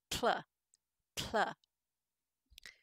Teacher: It starts with the tip of your tongue pressed against that alveolar ridge behind your teeth, where English speakers say t or d, and then you lower the sides of your tongue and let air flow over them.